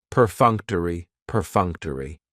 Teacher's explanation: That third syllable has the schwa, and it's going to end with that long E sound.